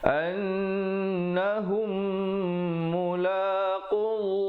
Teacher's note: Annahum mulaqullah, di situ lafzul jalalah perkataan Allah datang sebelumnya qaf barid dhammah dibaca tebal. Jangan baca nipis di situ, ya, dibaca tebal dengan kadar panjang dua harakat.